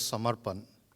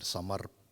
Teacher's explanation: there is a trilled R in there